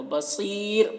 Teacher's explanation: تو را ساکنہ سے پہلے یا ساکن ہو جا رہا، تو جب را ساکن سے پہلے یا ساکنہ ہے تو را کو باریک پڑھنا ہے